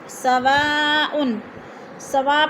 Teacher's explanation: 4 الفی مد ہے، 4 الف کے برابر ہم نے اس کو کھینچ کر پڑھنا ہے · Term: مد متصل